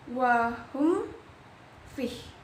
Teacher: Itu dibacanya jelas, mim matinya jelas dan tidak dengung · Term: idhar syafawi